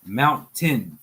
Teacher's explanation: There's a stop, and then there's a comeback in the breath. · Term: glottal stop